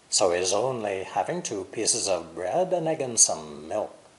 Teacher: the important content words are only and having the unstressed words are so and he's